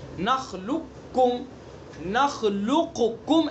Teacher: یا دونوں کے اعتبار سے یعنی مخرج اور صفت دونوں کے اعتبار سے قریب قریب ہوں، پہلا ساکن دوسرا متحرک ہو، پہلے کا دوسرے میں ادغام کرنا، جیسے الم نخلقکم، دیکھیے اس کا قاف کا کاف میں ادغام کیا، قاف کا کاف میں ادغام کیا، بڑے قاف کا چھوٹے کاف میں ادغام کیا. نخلقکم، نخلقکم ایسے نہیں پڑھیں گے اس کو، قاف کا کاف میں ادغام کر دیں گے.